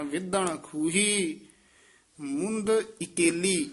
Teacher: ਵਿਧਣ ਕਸ ਕੇ ਬੋਲਣਾ ਨਨਾ ਨਹੀਂ ਲਾਉਣਾ ਨਾਣੇ ਨਾਲ ਉਚਾਰਨ ਕਰਨਾ